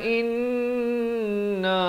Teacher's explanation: wajibul gunnah, wajib dengung di sini dua harakat